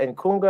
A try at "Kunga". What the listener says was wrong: The N is silent. So it's Kunga.